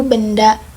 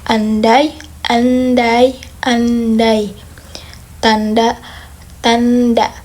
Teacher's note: pastikan aliran udara dari hidung saat mengucap N, lalu hentikan sejenak untuk memantul ke bunyi D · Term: konsonan ND